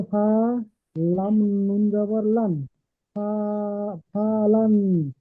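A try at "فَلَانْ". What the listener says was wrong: ফা টান হয়ে যাচ্ছে, ফা যাবার ফা, লাম নুন যাবার লান, ফালান, ফালান, ফালান নয়। ফা এর উপরে যাবার এসছে, হারাকাতের ইজরা, টান হবে না।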